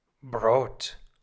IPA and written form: bʁoːt (Brot)